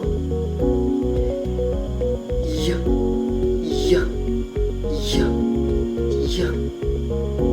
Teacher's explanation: sa paraan ng malapatinig na may tunog sa puntong pangala ngala